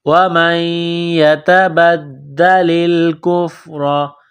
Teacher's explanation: یا مشدد ہے تو نون ساکن پر غنہ کریں گے، آواز ناک میں چھپائیں گے۔ ومن يتبدل الكفر تا کو باریک کرنا ہے، نقطوں والی تا ہے۔